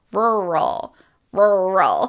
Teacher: in American English we have that very American r. So the word has two of them